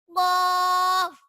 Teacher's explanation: یہ زبان کی جڑ اور تالو کے نرم حصے سے ادا ہوتا ہے